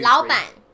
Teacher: it will become second, third tone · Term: third tones